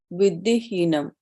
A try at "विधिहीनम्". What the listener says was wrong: Heenam. You must just give that little dirgha. Heenam. Vidhi heenam.